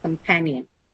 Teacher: So second syllable pan is the one which carries the stress. Companion. Okay.